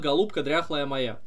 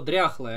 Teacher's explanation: очевидно ударение в этом слове одно и она падает на первую я